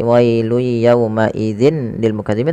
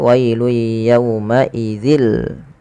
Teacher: kita masukkan ke huruf lamnya secara langsung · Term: idgham bila gunnah